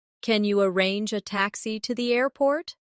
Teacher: In connected speech, can you can sound like kin ya.